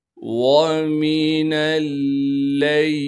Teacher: وَاذْكُرِ اسْمَ رَبِّكَ بُكْرَةً وَأَصِيلًا وَمِنَ اللَّيْلِ، واو کو بغیر کھینچے پڑھیں گے، میم کو بھی بغیر کھینچے پڑھنا ہے، نون کو لام سے ملائیں گے اس لیے کہ لام پر تشدید ہے، تشدید ہونے کی وجہ سے تھوڑا سا ٹھہراؤ رکھیں گے اور لام کو آگے یائی مدہ سے ملا دیں گے، اس لام کو بغیر کھینچے پڑھنا ہے۔